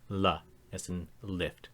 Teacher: the only lateral sound in the language, and it is a clean L sound like in most English dialects and other languages that contain it.